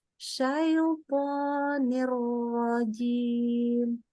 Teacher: Nun tanwinnya melebur ke huruf setelahnya. Melebur itu idgham, makanya ada tasydid.